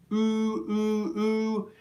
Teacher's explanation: when I'm making the oo vowel sound, my lips are tightly rounded